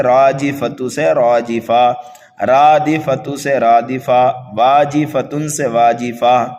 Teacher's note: جب گول تا پر وقف کیا جاتا ہے تو اس کو ہائے ساکنہ سے بدل دیا جاتا ہے، اس کو کہتے ہیں وقف بالابدال۔